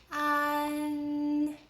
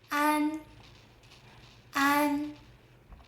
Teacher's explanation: The a here is open and relaxed.